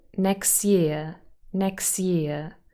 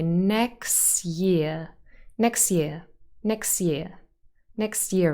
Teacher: here again the t is dropped we just say next year